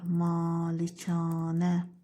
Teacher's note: 2 a'ların ikisi də uzun tələffüz olunur.